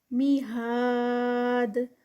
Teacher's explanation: دال کا کلکلا اینڈ پر اور الف مد ہے 4 counts کا اسٹریچ اسٹاپ پر